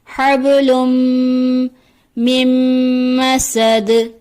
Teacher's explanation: دال حرف قلقلہ میں سے ہے اسی لیے دال کی آواز پلٹ کر واپس آئے گی